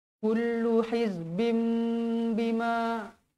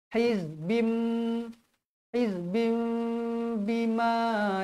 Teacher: Bacaan iqlab, bacaan dia bibir kita bersentuhan dengan kadar 2 harakat.